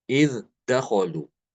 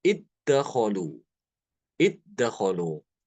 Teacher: namun Imam Ibnu Amir dia mengidghamkan dalal ini ke dalam Dal Jadi dibacanya iddakolu akolu dalalnya hilang masuk ke dalam dalal Ya